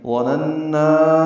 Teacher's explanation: اب لمبا کر رہے ہیں کیونکہ آگے حمزہ آ رہا ہے، یہ مد منفصل بن گئی